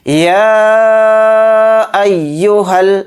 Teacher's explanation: ہا کو لام میں ملائیں گے، ہا کے ساتھ الف نہیں پڑھا جائے گا